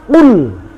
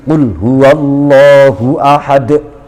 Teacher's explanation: Ya harus terdengar volumenya sama dengan volume huruf sebelumnya. Qul huwallahu ahad, d-nya itu sama kerasnya dengan mulai awal. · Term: qalqalah kubra